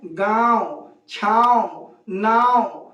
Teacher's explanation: जैसे अगर हम इस सब प चंद्रकला लगाते चले तो हमको नाक से आवाज निकालनी पड़ेगी और नाक से आवाज निकालने का मतलब कि हवा भी अधिक नाक से ही निकलेगी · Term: अनुनासिक